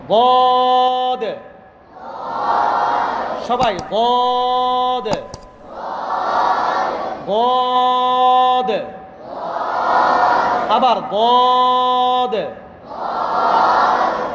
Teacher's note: জিহ্বার গোড়ার কিনারা উপরের মাড়ির দাঁতের গোড়ার সাথে লাগাইয়া, দুই সাইড যদি আমরা একসাথে লাগাইতে পারি সেটা উত্তম। আর যদি না পারি তাহলে এক সাইড দিয়ে আদায় করলেই, লাগাইতে পারলেই দদের উচ্চারণটা আদায় হবে।